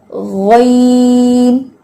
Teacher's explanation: اب جب آپ غین پڑھیں گی تو آپ زبان کی جڑ کو اٹھا کے پڑھیں گی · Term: استعلا